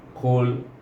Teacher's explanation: Kul iaitu dia betul-betul qaf ini betul-betul selepas anak tekak kita di langit-langit depannya, depan anak tekak tu, bertentangan dengan anak tekak tu. Kul dan terangkat pangkal lidah.